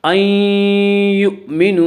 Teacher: یہاں نون ساکن کے بعد یؤمنو کے 4 حرفوں میں سے یا آ رہا ہے، اس لیے یہاں پہ ادغام بالغنہ ہوگا